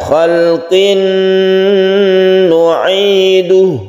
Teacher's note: ada tanwin bertemu dengan nun, kita sebut dengan idgham bi gunnah. Kita baca dengung dan kita panjangkan.